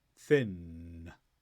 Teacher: the tip of your tongue is touching above your teeth make a block so the air goes through your nose then release